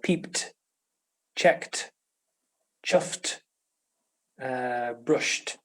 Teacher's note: we pronounce ed as t after voiceless consonants.